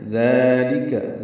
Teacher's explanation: دال نرمی سے پڑھیں گے اور 2 حرکات لمبا کریں گے، لام کاف جلدی پڑھیں گے اور باریک پڑھیں گے.